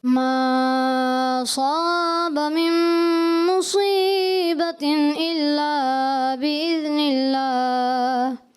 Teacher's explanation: ایک تو بِإِذْنِ اللہ میں جو ہے ذال میں کلکلہ ہوا، اور ما اصاب حمزہ جو ہے یہاں ما اصابہ کا حمزہ، ماں کے بعد حمزہ واضح کرنا ہوتا ہے، یہ حمزہ واضح نہیں محسوس ہوا، تو اس وجہ سے ان کو 10 میں سے 8 نمبر دیے جائیں گے. · صاد کی ادائیگی تھوڑی سی، ویسے تو صاد ماشاءاللہ صحیح پڑھا ہے انہوں نے، لیکن مزید اس کو پر کرنا چاہیے